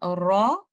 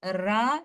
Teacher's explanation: जब हम letter रॉ को तफखीम के साथ पढ़ेंगे, इसको हम रॉ पढ़ेंगे, रा नहीं पढ़ेंगे